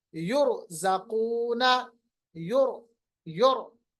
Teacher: रा को मोटा पढ़िए, पुर कीजिए, मुंह भर के पढ़िए